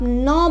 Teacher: नाक से आप न बोलिएगा तो आपका नाक वाइब्रेट करेगा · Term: नासिक